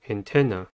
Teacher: Antenna has three syllables and the stress is at the second one. The first syllable is an, a, the first sound of a-a-r, n.